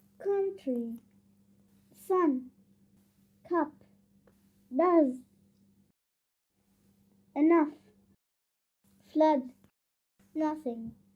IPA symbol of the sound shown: ʌ